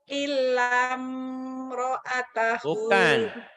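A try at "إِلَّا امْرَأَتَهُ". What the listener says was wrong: Bukan ilam, pendek. Ilam, panjang, jadi kosar. Pendek. Matobinya hilang karena ketemu huruf mati. Ilam.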